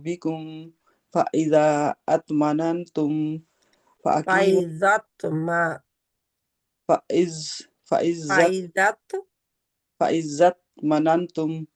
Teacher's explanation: छोटा कलकला होता है यानी कि आवाज जरा सा दोबारा सुनाई देती है